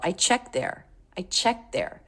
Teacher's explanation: sometimes when T comes between 2 consonants, a native speaker will drop it. And that's what I hear her doing. I don't hear a T at all. I checked there.